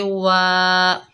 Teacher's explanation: ये अलिफ मद्दा है, एक अलिफ की मिकदार खींचकर पढ़ेंगे वा, हुव्वत तव्वा।